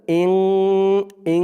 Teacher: নুন সাকিন বা তানবিনের পরে যদি ইকফার সেই 15 হরফের যে কোনো একটি হরফ আসে, তাহলে সেখানে ইকফা অর্থাৎ নাকের ভিতরে লুকিয়ে গুন্না করে পড়তে হয়।